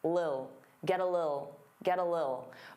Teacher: Some native speakers really reduce this word and it just sounds like lil